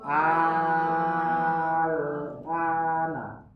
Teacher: Mad lazim kilmi mukhaffaf. Jadi a-nya dipanjangkan dulu. Al baru sukun. Al. Ya, dipanjangkan dulu.